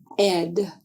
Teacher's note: To make the sound of the letter E, which is an open mouth vowel sound, this short E sound is made with the tongue in the front middle position in the mouth. Is a voiced sound.